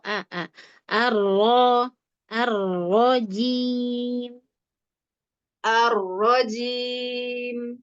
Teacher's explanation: A-nya tipis aa bukan o.